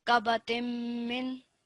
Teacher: we're merging this together, and we've got mim mushaddad. So that nasal sound again needs to come through.